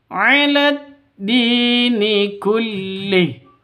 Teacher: 'Ala dini, di panjang dua ketukan karena ada ya mati diawali dengan kasrah. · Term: mad tabi'i